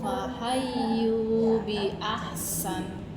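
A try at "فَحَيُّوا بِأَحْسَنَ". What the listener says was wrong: Bi ahsan kurang deras. Kurang lama. kurang kali lipatnya di ahsana. Ya, lihat ya, pokoknya kurang berbau, lemah ya.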